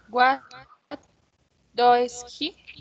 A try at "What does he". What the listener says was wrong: The pronunciation das, no dois, das. ¿Cómo suena la O y la E? Das. Das.